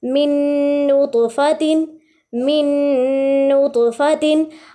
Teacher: अब इस पूरी लाइन में मीम मुशद्दद और नून मुशद्दद भी आ रहा है, तो हमने इदगाम के साथ साथ वहाँ पे गुन्ना भी किया, यानी गुन्ना के साथ हमने इदगाम किया है